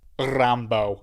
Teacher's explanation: you did a bit of a trill. You trilled the R for some reason.